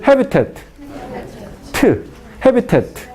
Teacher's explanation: Se pronuncia la consonante apicodental oclusiva sorda